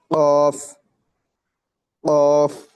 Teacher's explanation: pronouns from the root of the tongue and the soft plate